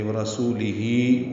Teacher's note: ورسولی میں را پر پڑھیں گے · سو واو مدہ ہی مد صلہ، یہ 2 حرکات لمبے کریں گے